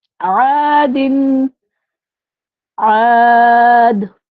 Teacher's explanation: ہم نے یہاں پہ غنہ نہیں کیا کیونکہ آگے عین آ رہا ہے